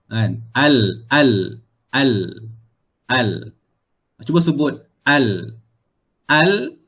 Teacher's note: huruf lam dia punya markasnya adalah ujung lidah ujung lidah menyentuh bahagian tempat tumbuh gigi